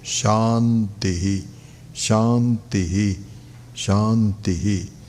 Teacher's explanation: But what it is that if you notice that if you do that after the Sahana Vavatu, then it becomes Shantihi. So it's high in the beginning and ending is low.